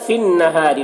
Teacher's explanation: तूलिजुल लैल फिन्नहारि, नून मुशद्दद है, नून में गुन्ना करेंगे। रा को बारीक पढ़ेंगे, रा के नीचे ज़ेर है।